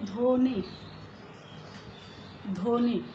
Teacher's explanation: যেমন যদি বলি ধ্বনি, ধ্বনি অর্থাৎ যে আওয়াজ, তো ধয়ের সঙ্গে বফলা যুক্ত রয়েছে এই ধ্বনিটি কিন্তু আমরা বফলা উচ্চারণ করছি না, এবং ধ্বনি এই ধটিকেও আমরা অন্যরকমভাবে কোনো উচ্চারণ করছি না, বরং ধয়ের যে স্বাভাবিক উচ্চারণ থাকে সেই স্বাভাবিকভাবেই উচ্চারণ করছি, ধ্বনি।